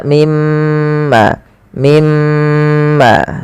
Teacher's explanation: Maka nunnya masukkan ke huruf mim. Maka mimma mimma sambil ditahan.